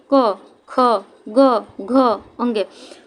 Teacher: इसमें प्राणवायु का ज़्यादा जोर हमारे कंठ पे होता है, हमारे गले में होता है। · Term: कंठ ध्वनि